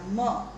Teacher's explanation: એ નાકમાંથી હવા બહાર ફેંકાઈને મ બોલાય છે. એ જ રીતે ક, ખ, ચ, છ વગેરે આ જે બધા વ્યંજનો છે એ આપણે જોયું એ અઘોષ વ્યંજનો છે. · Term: અનુનાસિક